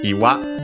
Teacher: Iwa accented on the last one